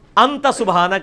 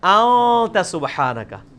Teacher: اخفا اسے کہتے ہیں کہ خفی کر کے پڑھ رہے ہیں، نون پورا واضح نہیں کر رہے، ان نہیں پڑھ رہے، پڑھ رہے ہیں.